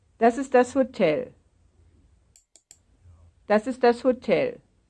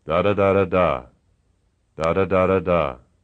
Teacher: Notice that the voice starts at one level, rises, and then falls.